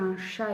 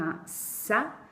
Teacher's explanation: Et pour les enfants donc, qui prononcent, au lieu de dire un chat, ils vont dire un ça, eh bien là, en fait, la difficulté, ça va être le placement de langue. La langue pour le ch est un petit peu soulevée dans la bouche, alors que pour le S, elle va se retrouver en bas sur le plancher de bouche.